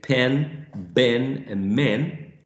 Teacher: bilabials produced with the two lips put together. That's when we say pen, ben, and men, right?